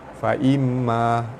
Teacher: mim sabdu wajibul gunnah, ditekan dan tahan serta dengung dua harakat